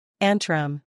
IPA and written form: ˈæn trəm (Antrum)